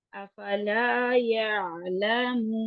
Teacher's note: عین بھی جو ہے توسط کا لیٹر ہے تو اس کو تھوڑا سا درمیانہ سا ٹائم دیں گے